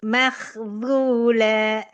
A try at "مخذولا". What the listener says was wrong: masih belum balik tuh. Balikkan dulu lidahnya, balikkan dulu. Jangan makhzu, jangan gitu. Harus balik. Makhzu. Kalau enggak jadinya tebal.